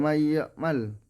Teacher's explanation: nun mati bertemu dengan huruf ya, cara membacanya yaitu memasukkan dan mendengung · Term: idgham bigunnah